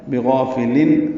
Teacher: بغافل میں غین پر پڑھیں گے، غا الف مدہ، اس کا الف بھی پر ہے، فا کو باریک اور جلدی معروف طریقے سے پڑھیں گے